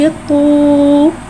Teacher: वाव मद्दा को एक अलिफ यानी 2 हरकत के बराबर खींच के पढ़ेंगे। तो वाव पेश तू। · वाव को होठों की गुलाई के साथ अदा करके पढ़ेंगे।